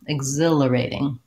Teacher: we have second syllable stress. So you can see that's marked in the dictionary with this little diacritic, a little line before the stress syllable.